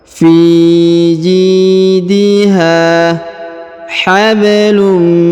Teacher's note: huruf ha dipanjangkan dua harakat karena di depannya terdapat Alif fiidha habum huruf ba berharakat sukun maka dipantulkan atau diqolqolahkan Fi